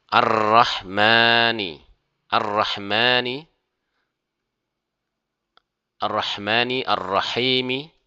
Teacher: maka huruf lam tidak dibaca, langsung masuk kepada ra ya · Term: alif lam syamsyah